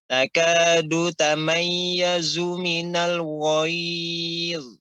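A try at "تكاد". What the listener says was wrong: Namun dalnya itu ya punggung lidah, tidak ujung, tidak takadu. Kan tapi takadu.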